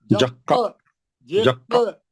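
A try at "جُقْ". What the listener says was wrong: जबर नहीं लगा ना, खलखला करना।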